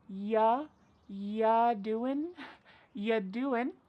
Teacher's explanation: we're going to start this question with just you, which is reduced to y.